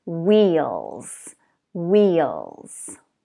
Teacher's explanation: To pronounce this word correctly, you have to make the vowel long and tense.